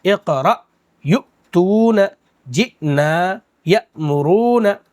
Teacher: اب حمزہ کو مذکر بولیے یا مؤنث بولیے، کچھ سمجھ میں نہیں آتا بھائی، تو حمزہ ساکنہ کہلائے گی، حمزہ پر جزم آ جائے تو، اور اس کو جھٹکے کے ساتھ پڑھیں گے